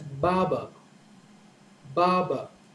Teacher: so the stress is on the first syllable ba and the stress on the second syllable is a little lower